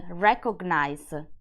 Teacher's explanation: in English you say GN as the two separate letters like in the word recognize where the G has a hard sound